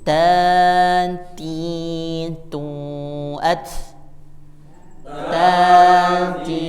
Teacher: Jadi hembusan nafasnya ada di hujung lidah menempel ke langit-langit.